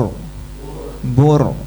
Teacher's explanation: Kalau jatuh setelah domah juga tebal.